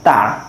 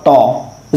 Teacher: ता को तो बारीक पढ़ा था हमने, लेकिन तो हुरूफ मुस्तलिया में से है तो इसको पूर्व पढ़ेंगे